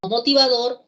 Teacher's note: Una palabra como motivador lleva la intensidad, la fuerza de voz en la última sílaba.